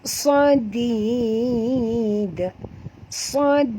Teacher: perhatikan bunyi dal. Jangan tebal, kena sentilkan lidah.